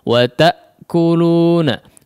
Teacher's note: Wa ta'kulu, memang di situ ya ada potongan ya, ada pemotongan aliran suara ya ketika pengucapan hamzah. Ta'kuluna ada terputus sejenak di situ aliran suara ketika hamzah disukunkan. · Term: hamzah ketika disukunkan